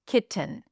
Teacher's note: So, we have a ki syllable, and then we have t uh n. The vowel between the T and the N is a reduced vowel. It's a schwa. It is barely there.